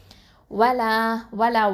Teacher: வலா வலா வாவ் ஃபத்ஹா, வாவ் வந்து உதட எழுத்து